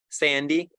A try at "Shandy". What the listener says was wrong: Sandy. With like an S. Sandy. With like SH.